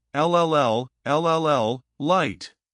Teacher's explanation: That bumpy ridge you can feel with your tongue while air flows out around the sides of your tongue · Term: English L